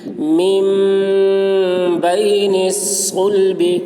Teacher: نون ساکن کے بعد با آ رہا ہے، اس لیے نون کو میم سے بدل کر غنہ اور اخفا کے ساتھ پڑھیں گے، اس کو اقلاب کہتے ہیں۔